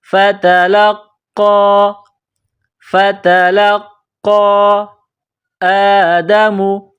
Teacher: لام کو قاف کے ساتھ پلس کرنا ہے، قاف کو موٹا کرنا ہے، یہ مد ہے، اس کو تھوڑا کھینچ کر پڑھیں گے۔